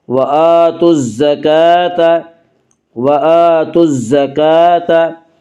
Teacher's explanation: وَآتُوا الزَّكَاةَ، کاف کے اوپر کھڑا زبر ہے، کھڑا زبر کو ایک الف کے برابر کھینچ کر پڑھیں گے۔